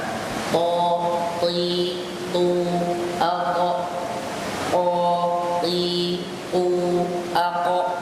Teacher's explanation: kedengaran tafkhim semuanya, tebal